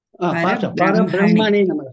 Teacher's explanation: Bra is not Mahaprana.